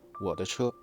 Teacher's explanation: the explosive consonant de between two vibrating vowels in 我 的 车 gets shortened into something resembling a voiced sound, a sound that doesn't even exist in Mandarin.